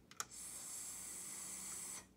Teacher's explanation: So S is a stretchy sound, but your voice is turned off.